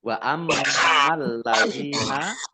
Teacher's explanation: Wa ammal ladzina, mim tasdid dibaca gunah atau mendengung, ditahan 2 harokat. Lamnya dibaca double, ada tasdidnya